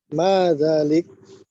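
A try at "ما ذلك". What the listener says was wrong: Cara bacanya tidak boleh diwakafkan dulu ya. Ma dzalika.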